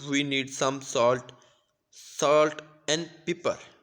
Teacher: We use n form of and, like the phrase of fish and chips.